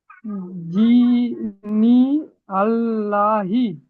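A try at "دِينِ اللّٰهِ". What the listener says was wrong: দিনী আল্লাহি নয়, দীনিল্লাহি, দীনিল্লাহি, দীনিল্লাহি। আমরা পড়েছি তাসদিদ ওয়ালা হরফ দুইবার উচ্চারণ করতে হয়, একবার ডান দিকের হরফের সঙ্গে মিলিয়ে, একবার নিজে নিজে। দীনিল্লাহি।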